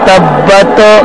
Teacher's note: تبت میں تا کی جو آواز ہے اس کو ہلانا نہیں ہے